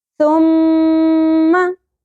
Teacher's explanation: मीम मुशद्दद पे गुन्ना होगा, आवाज को होल्ड करना है लेकिन जबर को ज्यादा नहीं खींचना